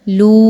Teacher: واو پر بڑی مد آ رہی ہے اور اس کو ہم 5 حرکات کے برابر لمبا کر کے پڑھیں گے، کیونکہ حمزہ جو ہے وہ اگلے کلمے کے شروع میں آ رہا ہے۔